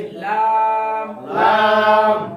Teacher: 8 number মাখরাজ জিহ্বার আগার কিনারা জিহ্বার আগার কিনারা সামনের উপরের সামনের উপরের দাঁতের মাড়ির সঙ্গে লাগিয়ে দাঁতের মায়ের সঙ্গে লাগিয়ে লাম লাম 9 নাম্বার মাখরাজ 9 নাম্বার